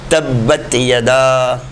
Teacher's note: تا کی آواز زبان کی نوک کا پچھلا حصہ سامنے کے دانتوں کی جڑ میں لگتے ہوئے آواز کو ہوا سے خارج کرنے پر ادا ہوگا۔